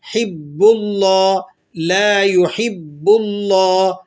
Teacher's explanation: با مشدد ہے، تو مشدد کو حرف کو کس طرح پڑھا جاتا ہے؟ سختی کے ساتھ ذرا رک کر